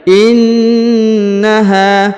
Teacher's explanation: huruf na ditahan dan ditekan karena terdapat tanda tasdid